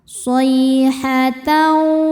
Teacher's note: Shay ada harfulin karena ya sukun sebelumnya fathah. Cara bacanya lembut atau lunak.